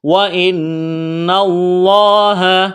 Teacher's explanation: لفظ اللہ کے نام سے پہلے زبر ہے، تو لفظ اللہ کے نام کو موٹا کرنا ہے